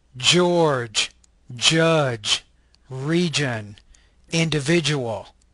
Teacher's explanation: This is a palatal, affricate, voice consonant.